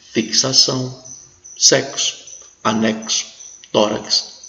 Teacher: é uma grafia para reprodução de dois sons é o que acontece com x quando ele tem som de ks